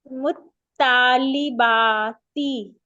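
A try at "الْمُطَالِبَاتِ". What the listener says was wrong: हाँ, शाबाश, आगे पढ़े।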